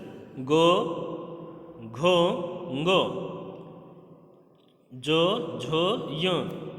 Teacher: दूसरा है घोष व्यंजन, अर्थात जिनको बोलने में, जिनका उच्चारण करने में स्वर तंत्रियों में कंपन होता है उन्हें कहेंगे घोष व्यंजन